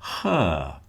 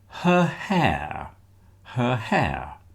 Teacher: Now, when we have a word like her, h e r, notice, I've told you this before, but you probably won't hear the r on the end